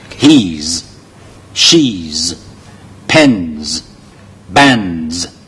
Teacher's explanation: 夾埋嗰啲牙咧，拆個音出嚟，成個人個口嗰度咧係震嘅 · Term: Z音